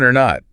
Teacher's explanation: And the little tag or not at the end, often mumbled, reduced, very quick.